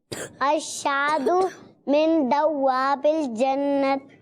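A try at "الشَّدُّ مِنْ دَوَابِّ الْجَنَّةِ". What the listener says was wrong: غلط. پہلے الشادو ہو گیا اور دوابل ہو گیا. دوابنی دوابل.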